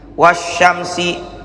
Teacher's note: alif lamnya dianggap tidak ada, langsung ke sya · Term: alif lam syamsiyah